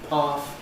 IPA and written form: pɑːθ (path)